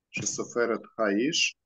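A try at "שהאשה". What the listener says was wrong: Ну, только не Ниш, а Иша.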